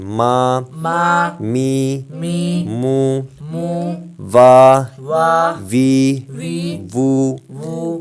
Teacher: میم جو ہے دونوں ہونٹوں کے خشک حصے سے، · واو دونوں ہونٹوں کی گولائی سے ادا ہوتا ہے،